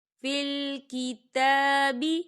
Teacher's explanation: تا کے پر کھڑی حرکات ہے، تو ہم اسے 2 حرکت کے برابر کھینچیں گے،